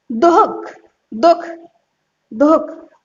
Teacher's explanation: ये नहीं कि तह तेज तक बोलते रहो, ऐसा नहीं। हा साउंड तो निकलेगी लेकिन धीमे निकलेगी, आधे रूप, आधा हा के रूप में। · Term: विसर्ग